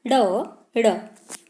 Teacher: इनमें जीभ पहले ऊपर उठती है, फिर जीभ मूर्धन्य उच्चारण पर आ जाती है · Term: द्विगुण व्यंजन